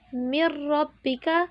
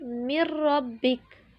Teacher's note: نون ساکن یا تنوین کی آواز کو غنے کے بغیر ملا کر پڑھیں گے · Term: ادغام بلا غنہ